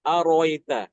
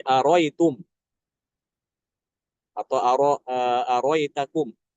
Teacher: ini hamzah yang kedua itu dibuang sehingga bacanya arita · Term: Hamzah yang kedua dibuang